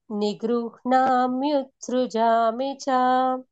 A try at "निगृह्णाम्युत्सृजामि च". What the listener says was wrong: కరెక్టే అంటున్నారు, కానీ నిగృహ్ణ కాదు, నిగృహ, నా ఫస్ట్ రావాలి. సంధి రూల్ అప్లై అవుతుంది. నిగృహ న ఫస్ట్ వస్తుంది.